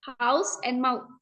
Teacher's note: This diphthong starts with an open vowel sound and moves towards a closer, rounded sound. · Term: closing diphthongs